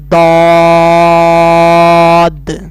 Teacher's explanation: اس نے بھی حروف مستعلیہ کی طرح پر یعنی موٹا پڑھا جانا ہے، کیونکہ یہ حروف مستعلیہ ہے۔